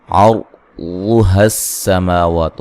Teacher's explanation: واد کو موٹا ادا کریں گے، سین کو باریک سیٹی سے ادا کریں گے